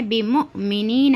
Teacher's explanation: حمزہ ساکنہ ہے اس لیے حمزہ ساکنہ میں جھٹکا ہوتا